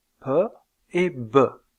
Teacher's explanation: PE et be dans le cas de ces deux occlusives bilabiales vous avez un blocage de l'air au niveau des lèvres puis une libération brutale puisque ce sont des occlusives le voile du palais est relevé